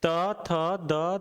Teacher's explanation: ता वर्ग क्या हो गया? दांत में आएगी, जीभ दांत में लगेगी।